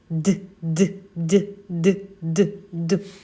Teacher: наші голосові зв'язки вібрують а отже він дзвінкий